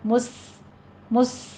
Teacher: سین کے اوپر ہمس ہوگا، مس ایسے آپ نے سیٹی کی آواز لے کر آنی ہے